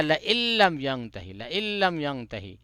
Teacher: بلا غنہ ہوتا ہے ادغام تام بھی بولتے ہیں اس کو یا حمزہ کو لام میں جوڑ دیں گے یہ نون سمجھو کہ پڑھنے میں بالکل نہیں آئے گا